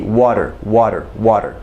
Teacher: in most american mouths this t in between two vowel sounds is going to be this d